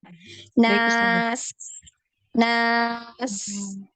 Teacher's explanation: Untuk sin itu ngalir ya. Harus ada aliran suaranya. Apalagi ketika sukun ini nampak sekali aliran suaranya ya. Nas, nas, ya tajam juga ya.